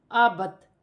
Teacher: حمزہ زبر ا، با زبر با، ابا، تا زیر تی، آباتی، وقفاً آبت۔ زیر گر جائے گی اور تا ساکن ہو جائے گی